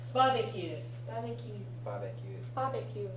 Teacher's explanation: barbecue barbecue barbecue barbecue barbecue notice where the extended vowels are there's no extended vowel after B